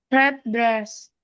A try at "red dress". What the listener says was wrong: Tadi agak jedak sedikit nih. Didekatin lagi.